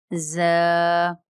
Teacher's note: زبان کی نوک اور اوپر نیچے کے دانت جب آپس میں ملیں تو زا اور سین ادا ہوتا ہے